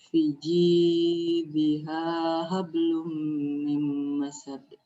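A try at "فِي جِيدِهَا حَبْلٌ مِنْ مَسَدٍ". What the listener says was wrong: Ya, di sini V-nya panjang. Fiji sama dengan G itu panjangnya. Fiji diha.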